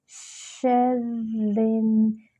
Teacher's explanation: نیچے کسرہ ہے، باریک کرتے ہوئے نون سے ملائیں گے، شرن، نون پہ جو ہے غنہ کریں گے، 2 حرکات برابر ، نون پر شد ہے نا تو جماؤ بھی ہوگا، نفاثاتی،